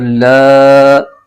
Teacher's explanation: مشدد حرف اپنے سے پچھلے متحرک حرف سے مل کر پڑھا جاتا ہے، تو لہٰذا اس لام کو ہم را کے ساتھ ملائیں گے، اور لام پر کھڑا زبر ہے اور اس کو ایک الف لمبا بھی کھینچیں گے